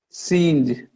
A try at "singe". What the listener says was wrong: You missed the J at the end of singe.